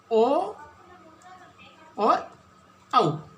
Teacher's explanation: कंठ और ओष्ठ, यानी जिससे ध्वनि कंठ और होठ दोनों से मिलकर बाहर आ रही है